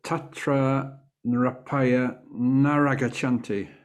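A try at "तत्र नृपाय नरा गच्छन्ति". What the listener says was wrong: Naragachanti, yes.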